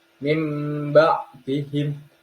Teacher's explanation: Contoh bacaan iglab yang pertama adalah nun sukun bertemu ba, dibaca dengung, satu alif atau dua harokat atau sampai 3 harokat. Mim ba'dihim.